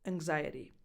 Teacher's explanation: because the N before the X softens that [g] sound